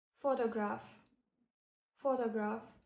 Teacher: Photograph, where the first syllable is stressed